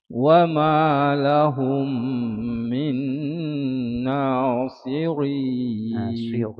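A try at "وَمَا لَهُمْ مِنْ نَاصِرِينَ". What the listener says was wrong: Jangan tebal. Dia sirin nipis. Nasirin. Wa ma lahum min nasirin. Sot memang tebal, tapi bila matikan ra, bawah rin nipis ya.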